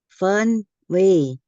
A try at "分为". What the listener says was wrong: Ya, 分为 lebih gantung di atas nada 2. Yang 分nya udah bagus ya.